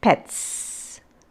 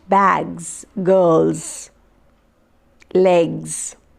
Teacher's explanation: all these the z sound it is voiced